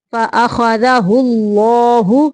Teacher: اللہ کا لام موٹا پڑھیں گے